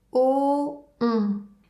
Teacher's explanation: Pour le son ON, la bouche prend la même forme que pour le son O et ensuite le son devient nasal.